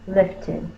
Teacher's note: Because the word ends in a T, we say the ed as ed.